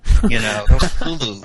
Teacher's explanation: It sounds more like sneeze with a glottal stop.